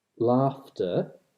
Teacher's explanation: Another word which is relevant would be laughter, which starts out as hleachtor, like dochtor with a ch, but in this case the syllable final ch becomes a f, it becomes a labiodental voiceless fricative instead